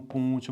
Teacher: ਮਲਵਈ ਉਪਭਾਸ਼ਾ ਹੈ ਉਸ ਦੇ ਵਿੱਚ ਬੇਲੋੜੀ ਨਾਸਿਕਤਾ ਵਧੇਰੇ ਹੈ। ਬੇਲੋੜੀ ਦਾ ਮਤਲਬ ਇਹ ਹੈ ਕਿ ਸ਼ਬਦ ਬਿਨਾਂ ਨਾਸਿਕਤਾ ਤੋਂ ਹੈਗੇ ਆ, ਪਰ ਮਲਵਈ ਬੋਲੀ ਨੂੰ ਉਪਬੋਲੀ ਨੂੰ ਬੋਲਣ ਵਾਲੇ ਲੋਕ ਉਸ ਦੇ ਵਿੱਚ ਨਾਸਿਕਤਾ ਲਿਆ ਦਿੰਦੇ ਹਨ।